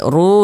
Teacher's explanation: ru dibaca panjang ini namanya Mad thi'i